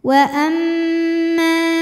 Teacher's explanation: Cara bacanya didengungkan, bunyi M-nya tahan sampai ada suara masuk hidung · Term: gunnah musyaddadah